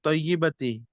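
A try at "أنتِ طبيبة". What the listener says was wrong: طیبہ نہیں ہے نا، اس کو غور سے پڑھیے کیا لکھا ہوا. انت طبیبتن ہے، وہ ڈاکٹر نہیں کے معنی میں ڈاکٹر. انت طبیبتن. طبیبتن. انت طبیبتن.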